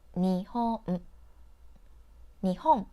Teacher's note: For example, when you say Japan in English, you put stress on pan and say it for longer than the other parts like Japan. The word Nihon in Japanese have 3 syllables, and you say each character for the same length of time. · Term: equal stress